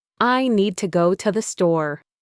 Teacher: The stressed words, need, go, store, are clear and strong. The function words, I, to the, are weak, quick, and reduced. was searching for the full, clear sound of to, but in this sentence, it often becomes a tiny, soft sound like tuh. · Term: rhythm